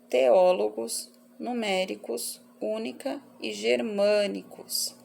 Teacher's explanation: Todas elas têm em comum o fato de receberem acento na antepenúltima sílaba, portanto, são todas proparoxítonas.